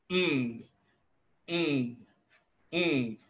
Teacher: You notice that the back of your tongue is establishing some contact with the soft palate. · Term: velar nasal